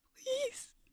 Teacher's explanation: Your please is a bit more breathy and airy there